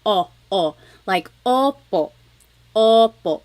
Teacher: Sometimes I think of it like having a ball in your mouth. Your tongue gets kind of pushed back and down a little bit and the inside of your mouth is open and wide. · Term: letter O